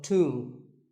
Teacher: the B is silent and the O is pronounced with an oo sound